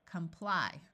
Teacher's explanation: this o can have either a short sound or can take on a muffled schw sound which sounds like a short u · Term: muffled schwa sound